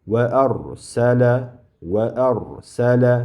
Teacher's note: Ro harfi sukunlik bo'lganida va oldidagi harfi fathalik bo'lib sukunlik bo'lganda ro yo'g'onroq talaffuz qilinadi. Ya'ni tafxim sifati bilan talaffuz qilinadi, yo'g'onroq.